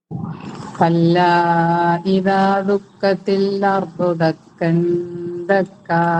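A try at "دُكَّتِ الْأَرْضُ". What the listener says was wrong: ഇപ്പോഴും ആ ശബ്ദ വരുന്നുണ്ട്. ദുഃഖത്തിൽ അർലു എന്ന് പറയാതെ ദുഃഖത്തിൽ ക്ലിയർ ആയിരിക്കണം കേട്ടോ. അതിങ്ങനെ ക്ലിയർ.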